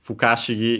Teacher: fukashigi, is actually accented on the ka itself, so yeah, be careful.